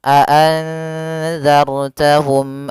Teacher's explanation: ketiganya harus jelas suara mimnya dan tidak boleh ditahan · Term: Izhar Syafawi